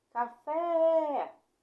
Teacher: Ó, fiquei mais tempo falando fé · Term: sílaba tônica